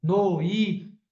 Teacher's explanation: O som tá descendo e fica fraco